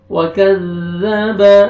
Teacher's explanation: ज़ाल को नरमी से अदा करेंगे ताकि ज़ा जोर से नहीं पढ़ना।